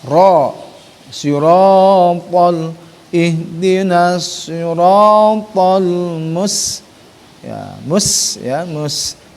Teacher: ro juga mengandung sifat at-tafhim, dia tebal